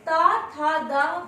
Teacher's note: दंत से, क्योंकि जब हम ता, था, दा बोलते हैं तो हमारे दंत आपस में मिलते हुए ध्वनि प्रवाहित करते हैं।